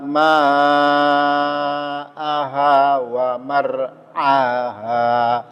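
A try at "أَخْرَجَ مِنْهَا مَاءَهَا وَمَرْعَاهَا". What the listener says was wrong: marnya kurang tebal waaha sekali lagi.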